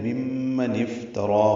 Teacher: فا ساکن پہ ہمس ہے، تا باریک ہے، را پر ہے، را کو 2 حلقات لمبا کریں گے